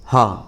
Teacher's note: जिन ध्वनि के उच्चारण में मुख गुहा खुली रहती है ठीक है और वायु है जो बंद कंठ को खोलकर झटके से बाहर निकलती है ठीक जैसे इसमें हमारा ह इसमें हमारा मुंह खुला रहेगा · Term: काकल ध्वनियां